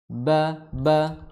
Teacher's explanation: Ba makhrajnya adalah di kedua bibir. Ba harus bertemu.